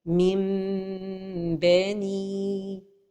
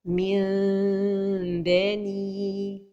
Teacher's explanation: la prononciation correcte se fait en laissant un tout petit espace entre les lèvres tout en prononçant la rouna